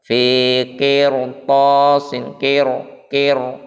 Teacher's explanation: Huruf to adalah huruf isti'la. Maka cara membaca huruf ra itu ditebalkan.